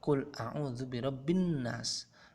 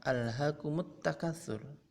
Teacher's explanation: bunyi huruf lam hilang dan melebur ke dalam huruf berikutnya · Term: Idgham Syamsiyah